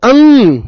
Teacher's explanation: अंग नाक और मुंह दोनों से आवाज आ रही है।